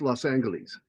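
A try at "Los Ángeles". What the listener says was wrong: Angeles. That G is not does not do the soft sound. It's Angeles. What I'm saying is that is not the correct way to pronounce that name.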